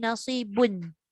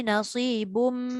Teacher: Dia dah tak boleh bunyi nasibun. Dia bunyi nasibum. Kan? Dia masuk sepenuhnya dekat mim. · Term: idgham ma'al gunnah kamil